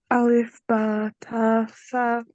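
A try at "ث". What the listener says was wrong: No sa. No harder. No putting pressure there. Okay, only touching. If you put pressure on sa, that is pressure. Sa, only touching. Sa. This is softly putting something softly on something.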